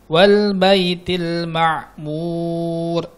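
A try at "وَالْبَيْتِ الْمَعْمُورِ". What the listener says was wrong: Tebal kan? Mur. Ulangin, belum tebal ya.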